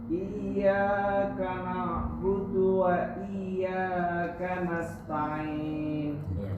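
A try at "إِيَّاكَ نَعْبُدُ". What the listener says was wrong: Kalau budu kayak orang Jawa ya. Jadi ke bawah logatnya. Agak jadinya yang tadi logatnya ke bawah, logat Jawa yang agak nyentak-nyentak. Nah, ini supaya lebih flat. Nah, ke arah Arab.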